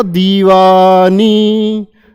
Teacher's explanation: इसमें दी शब्द जो है उसमें इतना समय लिया गया कि 3 बार लगे। वाह 3 बार और नी भी 3 बार।